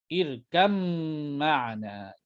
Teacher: Kerananya makhraj sama, iaitu bibir. Ba pun dua bibir, mim pun dua bibir. Maka digugurkanlah ya sifat bagi ba, ya sifat yang sukun bagi ba, tidak bolehlah ataupun irkab ma'ana. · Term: idgham